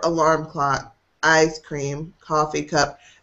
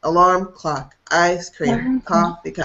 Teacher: we're going up and then down. Never flat, never alarm clock, ice cream, coffee cup.